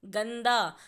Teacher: गंदा में आप देखेंगे ग के बाद न की आवाज़ आ रही है, गंदा। तो इसीलिए ग की खड़ी पाई पर लगेगा बिंदु और शब्द बना गंदा।